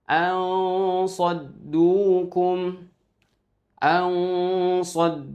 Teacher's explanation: posisi mulut kita itu sudah memasuki atau bersiap-siap untuk memasuki makhraj di huruf shad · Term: ikhfa